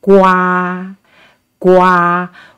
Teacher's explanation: the first one is the first tone flat